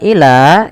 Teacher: ila ini panjangkan sepanjang 4 harokat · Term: mad jaiz munfasil